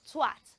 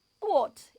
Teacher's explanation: It has the voiceless TH sound and the O sound and ends with a T sound.